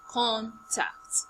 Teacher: when it's a noun, we start from high tone to low tone. As the first syllable is high, the second syllable is low.